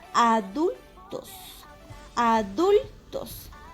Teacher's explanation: palabra grave porque está acentuada en la penúltima sílaba